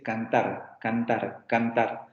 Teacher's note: ese fonema es un vibrante simple porque hay menos vibraciones que en el otro